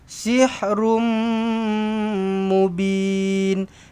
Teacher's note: Bila jumpa a dengan mim sabdu maka rapatkan terus bibir. Dengungkan dengan dua harakat. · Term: Idgham maal ghunnah